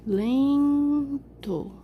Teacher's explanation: É fraco, é o som mais fraco. O som que sai mais fraquinho, que você pronuncia com menos intensidade. E, por eliminação, é a última sílaba, o to. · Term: átono